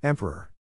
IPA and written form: ˈɛm pər ər (EMPEROR)